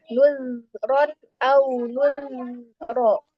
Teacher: ketika sukun tetap dialirkan suaranya, tidak boleh ada pantulan, tidak boleh macet ketika membaca zal sukunnya